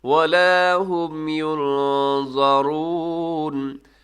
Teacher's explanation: اخفا کر دیجیے گا، آواز کو ناک میں لے جائے گا